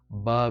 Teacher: Ba, as in bun or bud. Ba, ba with a strong gush of breath